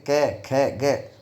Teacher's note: कंठ से इनका उच्चारण स्थान ऊपर से हम बोलने लग गए, तालु की ओर चला गया, लेकिन फिर भी ये मूलतः कंठ से उच्चरित होती है, इसलिए कोमल तालव्य इनको कहा जाता है।